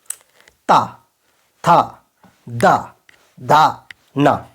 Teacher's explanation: दांत मतलब जिसमें दांत का स्पर्श जीभ से हो